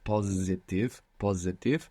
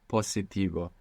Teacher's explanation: you pronounced an S where most English speakers will probably find themselves pronouncing a zed there